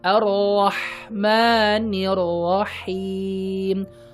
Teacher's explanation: Rahman Rahim pakai H tengah tenggorokan ya, bandingkan dengan Rahman Rahim pakai tenggorokan bagian bawah ya.